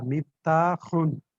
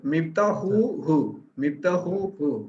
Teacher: হালকির হা বলে, এটা গলার মধ্যে থেকে উচ্চারণ করতে হয়। আর গোল হা যেটা, সেটা একটু বাতাস বের করে করতে হয়।